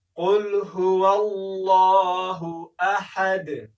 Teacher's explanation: احدون په هغه وخت کې ویل کېږي چې موږ تېرېږو، اما دلته که چیرې موږ وقف وکړو نو دلته موږ احد دال ساکنوو. نو که چیرې دال ساکن کړو په دال کې قلقله کېږي، داسې باید ونه ویل شي چې احد، احد، احد، قلقله باید وشي، هغه هم لویه قلقله، ځکه لویه قلقله هغه قلقله وه چې د یوې کلمې په پای کې به کوم توری د قلقلې راغلو.